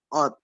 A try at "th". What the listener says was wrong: Lidahnya diginiin nanti di depannya. Sot. Coba bilang sot. Kok tot lagi lo? Kan udah bilang sot.